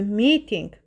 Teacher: Vurğu ilk hecanın üzərindədir